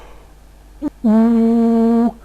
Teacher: And finally, we need a vowel that is produced with a back quality, where the tongue is extremely high in the mouth. The result is something like ooh.